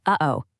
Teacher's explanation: That little pause, that catch in your throat right in the middle. That's it. That's a glottle stop. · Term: glottal stop